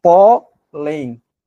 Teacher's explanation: Porque é paroxítona, pólen. A sílaba tônica é a penúltima e é terminada em N.